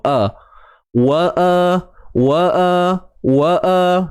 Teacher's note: Biasa saya sebut pisahkan bunyi. Maknanya pisahkan bunyi waw dengan a tu, hamzah baris atas tu